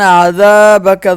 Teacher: ونخشی عذابک، ذال کو ایک الف کے برابر ہم کھینچ کے پڑھیں گے